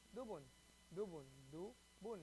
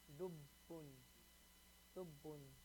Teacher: Dubun. But there's a shadda, you have to hold that ba sound.